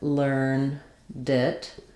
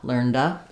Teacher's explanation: So when I say I learned it, it actually sounds like learned it. That D links to the I, the I sound of it